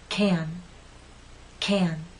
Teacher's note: the stressed can makes you pull your lips out and your tongue is rather flat and pushed forward